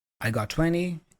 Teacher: she again drops the T in 20